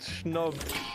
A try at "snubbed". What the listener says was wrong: You said schnubbed for sure.